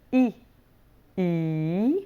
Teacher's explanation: the e e which is the palatal sound